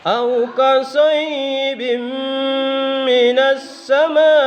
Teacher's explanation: Di sini yang perlu digarisbawahi kasayyibim, ya itu tanwin, tulisannya di situ bin, tapi kalau dibaca harus bim, ya karena tanwin itu masuk di mim. Bim, kemudian dua ketukan.